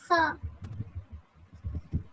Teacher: यह हरूफ अदना हलक से अदा होता है।